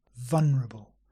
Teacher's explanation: many English people simply say vulnerable without the L